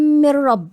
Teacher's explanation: النون وبعديها الميم المشدده ده ادغام كامل بغنه